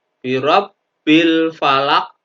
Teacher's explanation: Dan ini qalqalah adalah qalqalah kubro. Pantulannya lebih tebal.